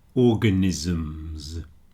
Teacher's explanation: If you make a plural of organism, those ism words that everybody hates, you can get organisms. But because a M is a voiced sound, the two s's sound more like a zed, like a z.